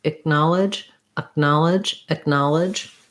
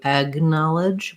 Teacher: you want to lift your tongue up for that k but don't let any air out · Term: stopped k